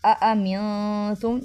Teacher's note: نون پہ اخفا کریں گے اور میم پہ جو ہے وہ غنہ کریں گے۔